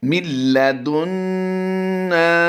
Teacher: نون ساکن کے بعد لام حروف یرملون سے ہے لیکن یہاں پر غنہ نہیں کیا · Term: ادغام بلا غنہ